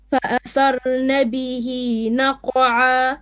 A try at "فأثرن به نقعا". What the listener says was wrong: Make your ra a bit more heavy. فأثرن به.